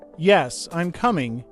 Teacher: But if you say, "Yes, I'm coming," your voice might stay flat or go down a little